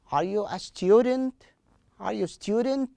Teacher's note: we have to raise the last part of the question raise the voice at that part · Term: correct intonation